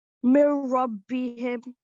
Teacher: I didn't hear the N sound at all because it completely merged with the ra. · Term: merging